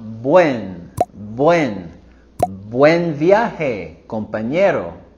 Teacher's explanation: Here we're going higher with our voice and intonation on buen